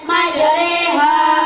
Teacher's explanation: bacaan imalah ialah memilihkan bunyi fathah kepada kasroh